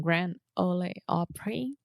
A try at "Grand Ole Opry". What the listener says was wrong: Okay, I'll give you a hint. It's not Ole. The Grand Ole Opry. Yeah, Ole is OLE, and that's like an old-fashioned way to write old.